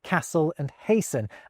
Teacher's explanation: We stop pronouncing the T's in words like castle and hasten